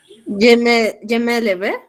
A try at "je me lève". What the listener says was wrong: Lève. Acuérdate que si no tiene acento no suena.